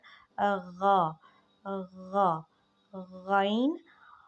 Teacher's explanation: ग़ाइन जो है वो गले के बिल्कुल ऊपर वाले हिस्से से निकल रहा है।